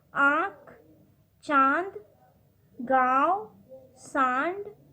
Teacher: अनुनासिक वाले वर्णों के उच्चारण में हवा नाक और मुंह दोनों से बाहर निकलती है